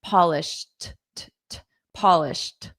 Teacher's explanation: So this ed d is pronounced as a soft t.